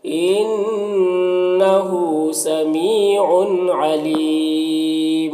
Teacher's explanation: ہاں میں الٹا پیش ہے، یہ واو مدہ کی طرح ہوتا ہے · ان کی تنوین میں اظہار حقیقی ہو رہا